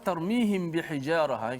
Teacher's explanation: mim mati bertemu dengan ba, maka kita baca secara ikhfa syafawi, iaitu kita kena panjangkan kadar dengung dia satu. Dan yang kedua, pastikan mulut kita itu sentuh bibir kita secara sentuhan yang biasa.